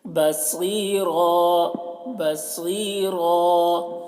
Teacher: صاد کو پور پڑھ رہے ہیں, را کو بھی پور